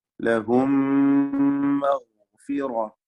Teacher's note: ലഹും സാക്കിന മീം ശേഷമുള്ള മീമിൽ പൂർണ്ണമായും ലയിപ്പിച്ച് മണിക്കണം. ഇദ്ഗാം മിസ്ലൈൻ സഗീർ എന്ന് പേര് പറയാം. · ഗൈന് തഫ്ഖീം ചെയ്യേണ്ട അക്ഷരമാണ്. റാഇനും തഫ്ഖീം കൊടുക്കുക. മഗ്ഫിറത്തുൻ വ തൻവീനിനെ ഇദ്ഗാം ബിഗുന്ന ചെയ്ത് വാവിലേക്ക് ലയിപ്പിച്ച് മണിക്കണം.